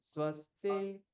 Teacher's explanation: স্ব নিচে, স্তি উপরে উঠিয়ে দিতে হবে।